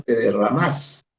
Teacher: De otro lado, en el verso 4, que es el más extenso, en el que te derramas sin perderte, el lector que no es nicaragüense se sorprende por la expresión te derramas, en la que el verbo aparece con tilde y por tanto suena como una palabra aguda. Si bien parece una entonación rioplatense, en Nicaragua dicho verbo, también se pronuncia como aguda.